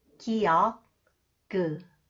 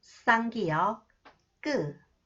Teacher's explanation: Hold the back of the tongue with force longer than 기역 sound and add pressure to the throat.